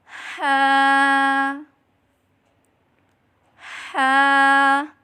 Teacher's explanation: حلق کے نیچے والے حصے سے ادا کریں